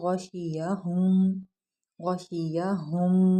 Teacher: یہ والا ہا سینے سے ادا ہوتا ہے، ٹھیک ہے، بھاری پڑا جاتا ہے